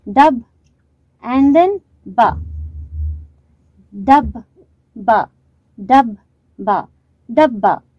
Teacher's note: So there is a stress on ba.